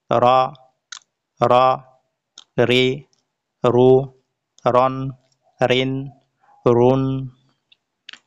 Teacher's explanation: জিহ্বার আগার উপরের পিঠ সামনের উপরের দুই দাঁতের গোড়ার সাথে লাগিয়ে।